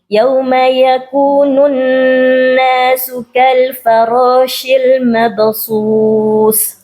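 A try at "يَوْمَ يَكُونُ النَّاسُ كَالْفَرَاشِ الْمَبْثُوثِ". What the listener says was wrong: Nah, itu sa-nya terlalu berdesis, jangan terlalu berdesis. Sa. Mabsus. Gigit ujung lidah sedikit.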